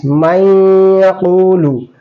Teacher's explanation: ইদগামে নাকিস মাইয়াকুলু, দুই আলিফ পরিমাণ এখানে গণনা করা হবে।